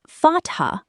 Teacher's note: Placing a fatha, pronounced fatha, with a clear, breathed H sound on top creates a short, crisp sound, like the A in the English word cat.